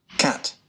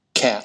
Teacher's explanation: Âm này nó hơi thiên vào âm E một chút. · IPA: /æ/